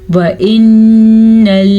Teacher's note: नून के ऊपर शद है तो गुन्ने के साथ अदा करेंगे, या मद्दा का ख्याल रखेंगे।